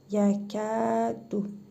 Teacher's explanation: Kəf hərfində hərfi məd var. Bir əlif miqdarı uzadırıq.